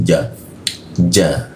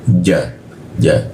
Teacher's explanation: Biasanya di depan lidah, di depan gigi. Kalau di Arab, ja-nya itu lebih di dalam, di tengah dia